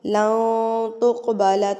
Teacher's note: اخفا کریں گے، یعنی کہ نون ساکن کی آواز کو ناک میں چھپا لیں گے